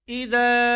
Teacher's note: ذا کو ایک الف کے ساتھ کھینچنا ہے، یعنی تقریباً 1 سیکنڈ تک اس کو آپ نے کھینچنا ہے